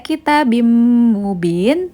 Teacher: tanwin bertemu dengan huruf mim hukum bacaannya adalah idgham bighhunah cara membacanya adalah didengungkan